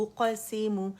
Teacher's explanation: حمزہ کو موٹا او کر کے آواز نہیں نکالیں گے, یہ او ہی ہے, باریک ہی رہے گا